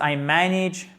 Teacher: Le A là se prononce comme un I court